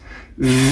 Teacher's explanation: Almost like you're taking the sound, which is voiced, meaning if you put your hand to your vocal cords, V, you can feel the vibration, it's voiced, versus F, voiceless, you won't feel any vibration.